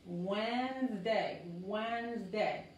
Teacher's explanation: todo esta D no se pronuncia y todo esto es una sola sílaba, Wednesday, Wednesday, como la Z otra vez, la Z, Wednesday, no es Wednesday, es Wednesday.